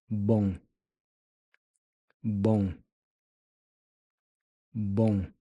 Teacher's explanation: The om is a nasal ng sound.